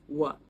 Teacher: when Thai people say the word van, they say wan